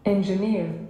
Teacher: Okay, so on which syllable is the stress? On the third one.